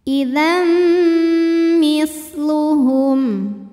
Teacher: Maka tanwinnya masuk ke mim, idzam dan tahan bunyi m-nya, dengungkan. Idzam misluhum. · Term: idgham bi gunnah